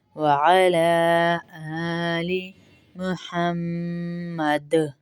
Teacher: وعلی آلی محمد، دال پہ کلکلا کریں گے